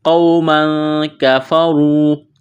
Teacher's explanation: را کو موٹا کرنا ہے، واو مدہ ہے، یعنی واو ساکن سے پہلے پیش ہے، ایک الف کے برابر اس کو کھینچنا ہے